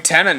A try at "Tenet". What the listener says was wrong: You're saying it like Tenant. Tenet. Because it's Tenet.